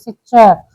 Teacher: तालव्य होता है, जीभ मुंह के ऊपरी हिस्से से टकराती है